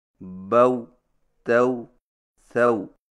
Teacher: واویلین کے ماں قبل کے زبر کو الف کی طرف ملان نہ کریں، مثلا بو، تو، سو کو یوں پڑھنا باؤ، تاؤ، ساؤ، یہ نہایت غلط طریقہ ہے۔